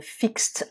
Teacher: on ajoute ed qu'on prononce t